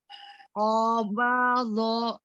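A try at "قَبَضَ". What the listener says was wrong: Oh ya, jangan turun do-nya. Qabadho. Tadi ya, seperti yang tadi Umi Aida ya. Tidak diturunkan ketika huruf yang tebal ya, naik ya dia isti'la.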